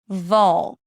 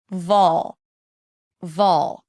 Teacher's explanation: this is a dark L, so it colors the vowel before, vol. And it actually sounds like you're putting a neutral O sound or the O as in all before the L sound.